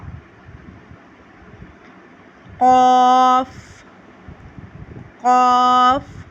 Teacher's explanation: زبان کی جڑ اور تالو کے نرم حصے سے